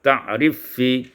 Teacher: diidghamkan fa pada fa